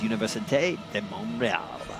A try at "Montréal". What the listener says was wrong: Montreal. There's no N. It's Montreal. Montreal.